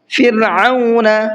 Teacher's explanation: را کو باریک پڑھنا ہے اور عین کو حلق سے نکال کر کے پڑھنا ہے